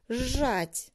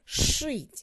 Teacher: Звярніце, калі ласка, увагу. Пры вымаўленні свісцячыя гукі з і с у прыстаўках на зычны прыпадабняюцца да шыпячых у корані слова і разам з імі вымаўляюцца як ж, ш, шч. На пісьме такое вымаўленне не перадаецца.